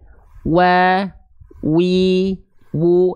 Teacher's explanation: kedua bibir dengan posisi maju seperti mengucapkan huruf u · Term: huruf wau